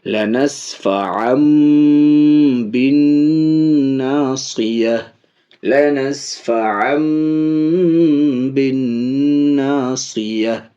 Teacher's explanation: اب اس کو عین نون زبر ان نہیں بولیں گے، عین میم 2 زبر ام بولیں گے · تنوین کے بعد با ہے، اس لیے تنوین کے نون کو میم ساکن سے بدل کے پڑھیں گے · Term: اقلاب